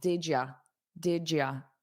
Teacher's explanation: some native speakers change you to ya, which is more unstressed, more casual